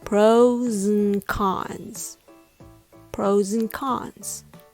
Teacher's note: In natural speech, and is often reduced to und or even just n.